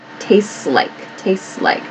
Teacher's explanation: so this s and l connect